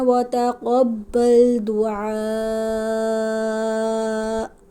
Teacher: یہاں پر مد متصل ہے، حمزہ اسی کلمے میں ہے، تو یہاں ہم نے مد کو 5 الف 4 سے 5 الف کے برابر لمبا کرنا.